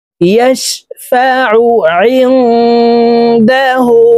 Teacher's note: আইন হরফকে হলকের মধ্যখান থেকে চাপ দিয়ে উচ্চারণ করব, কারণ আইনের মখরাজ হলকের মধ্যখান থেকে হবে।